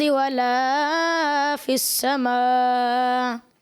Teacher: جیسے انہوں نے غلطی ہوئی ان سے، ایک تو مد اصلی کی، اور آخر میں جو ہے حمزہ جو ہے اس کو ظاہر نہیں کیا صحیح طریقے سے